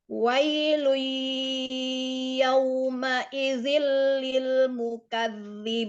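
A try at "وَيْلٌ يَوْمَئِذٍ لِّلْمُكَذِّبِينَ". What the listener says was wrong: Masya Allah, ahsanti. Bagus bacaannya.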